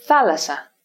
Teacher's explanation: We pronounce the double sigma as if it were only one.